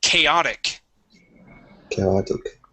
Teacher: so we can switch that t to a D